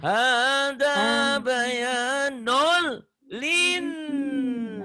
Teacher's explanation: Linnya nyamber, ditahan dan guna.